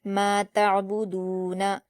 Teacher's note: میم پر الف مدہ ہے، 2 حرکات کھینچ کر پڑھیں گے، ما۔ تا پر حرکت ہے اور عین پر جزم ہے تو تا کو عین سے ملائیں گے اور قلقلہ نہیں کریں گے، با پر حرکت ہے، دال پر واو مدہ ہے، 2 حرکات کھینچ کر پڑھیں گے اور نون پر حرکت جلد پڑھیں گے، ما تعبدون۔